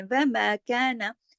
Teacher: اب وا کو نہیں کھینچیں گے زیادہ ما کو کھینچیں گے ایک حرکت صرف ایک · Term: الف مدہ